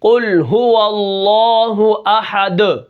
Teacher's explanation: اب یہاں پر قاف ہے تو یہاں پر آواز ہل رہی ہے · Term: قلقلہ